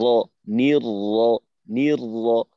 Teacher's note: এখানে মোটা উচ্চারণ আছে। তো ঠোঁট যেন গোল হয়ে না যায়, ঠোঁট ছড়ানো রেখে